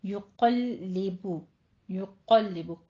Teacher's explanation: कफ पुर रहेगा, लाम पे सिर्फ आपने तशदीद अदा करनी है, लाम को पुर नहीं करना। युक़ल्लिबु नहीं कहना, युक़ल कल कौफ कहते हुए लाम बारीक करते हैं, ठीक है।